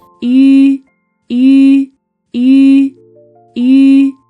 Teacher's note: Your mouth is narrow and rounded like oo, but your tongue is high and pushed forward like e.